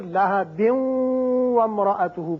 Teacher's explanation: تنوین کے بعد جب واو آ جائے تو وہاں ادغام ہوتا ہے غننے کے ساتھ